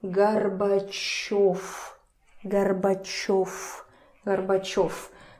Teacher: So it's not voiced in the end. It's unvoiced.